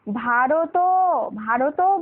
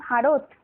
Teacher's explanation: শেষে দেখো ভারত যখন আমরা উচ্চারণ করি এরকম বলি না কিন্তু, ভারতও, ভারতও বলি না কিন্তু, মানে ত এর পরে কিন্তু আর অ উচ্চারণ করি না